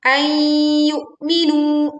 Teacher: leburkan nun sukun ke huruf ya, disertai dengung